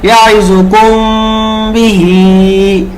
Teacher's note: ঠোঁটটা হালকা লাগবে, হালকা ছাড়বো, এরকম একালিপ ধরে রাখবো এই মিমটাকে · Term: ইকফা